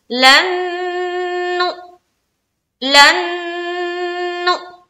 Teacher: नून यहाँ पर गुन्ना किया, इदगाम नाकिस का गुन्ना हो गया, उसके बाद झटका भी हो गया।